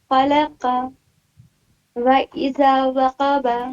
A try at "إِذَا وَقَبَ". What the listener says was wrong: وَإِذَا نہیں ہے، اِذَا ہے صرف.